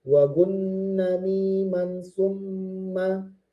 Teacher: ketemu nun yang bertasydid, mim yang bertasydid didengungkan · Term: gunnah